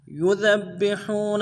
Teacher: یذبحون میں یا کو نرم سے ادا کرنا ہے، ذال کو باریک ادا کریں گے، ذال کو با کے ساتھ ملانا ہے، با کے اوپر تشدید زور دیں گے